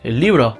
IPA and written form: 'librɔ (Libro)